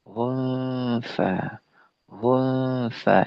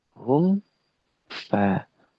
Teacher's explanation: mim sukun bertemu dengan wau dengan fa adalah izhar. Jelas mimnya sukun jelas fanya-nya harakat.